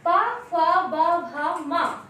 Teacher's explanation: तो इनको बोलते समय हमारे ओष्ठ आपस में मिलते हैं